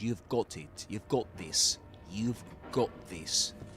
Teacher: But in British English, you've got it, you've got this, you've got this, with an O sound.